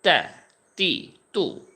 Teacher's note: আচ্ছা, তো আমরা এই অক্ষরটাতে পড়তেছিলাম, এটার উচ্চারণ একেবারে পাতলা হবে এবং আহ, এই উচ্চারণটা কোথায় থেকে হবে, তার উচ্চারণ হবে জিহ্বার আগা, সামনের উপরে যেই দাঁতের গোড়া আছে ওই জায়গা থেকে।